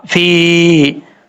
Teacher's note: یا ساکن سے پہلے زیر ہے، یا مدہ پڑھا جائے گا ایک الف کی مقدار، یعنی اس کو لمبا کر کے پڑھیں گے